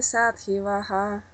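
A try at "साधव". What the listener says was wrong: Только там не и, садхава. Садхава, не садхива, а Садхава, так где там садхива? Там нету дхи. Вы просто прочитали как дхи.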